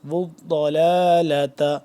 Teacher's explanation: ضاد کو موٹا کر کے پر کر کے پڑھیں گے